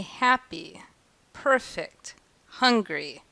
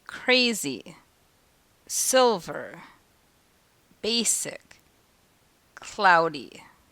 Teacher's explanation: In two-syllable adjectives, just like two-syllable nouns, the first syllable is stressed.